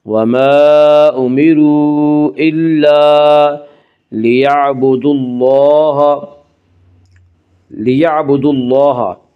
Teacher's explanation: اللہ کے لام سے پہلے دال کے اوپر پیش ہے اس لیے اللہ کا لام پر پڑھا جائے گا